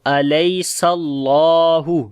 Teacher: سین کے اندر صفت ہمس و صفیر ہوگی